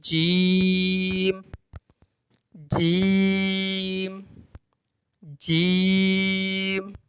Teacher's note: جتنی دیر میں ایک الف ادا کیا جاتا ہے اتنی مقدار 5 الف کی مقدار آپ نے جیم کو پڑھنا ہوتا ہے